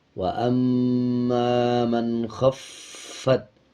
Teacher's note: فا کے اوپر شد ہے تو مضبوطی کے ساتھ ادا کیا جائے گا